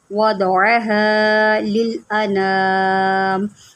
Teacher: یہاں پر دیکھیں وَالْأَرْضَ، اس کو ہم نے وَالْأَرْضَ نہیں پڑھنا، ہم نے یہاں پر را کو بھی موٹا کرنا ہے اور ضاد کو بھی موٹا کرنا ہے، کیونکہ ضاد جو ہوتا ہے نا یہ حروف مستعلیہ میں سے ہوتا ہے، اس کو ہم موٹا کر کے پڑھتے ہیں